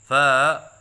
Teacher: الف کی ادائیگی کے وقت آواز میں لہراؤ سا پیدا کرتے ہیں، یہ غلط ہے، جیسے فا۔